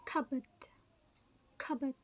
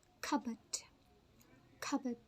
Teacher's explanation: in this word, the P is silent